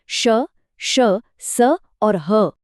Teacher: ओष्म व्यंजन जिन्हें बोलते हुए मुंह से हल्की गर्म हवा निकलती है।